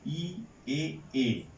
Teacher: এই তিনটা হচ্ছে সম্মুখ স্বরধ্বনি